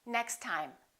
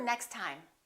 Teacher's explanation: We only pronounce one T.